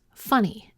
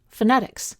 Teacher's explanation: In funny, the stress is on the first syllable, while in phonetics, the second syllable is stressed.